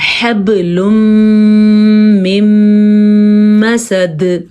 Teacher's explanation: نون تنوین کو میم میں جوڑ دیا گیا ہے، یہ ادغام بالغنہ ہے